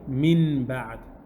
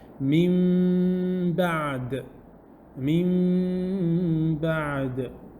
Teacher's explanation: What happens is that the Noon sound is changed into a Mim with ghunna, with the nasal sound, and Ikhfa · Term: Iqlaab